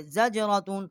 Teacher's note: تا کو واؤ کے ساتھ مشدد کیا ہے اور یہاں ہم نے غنہ بھی کیا ہے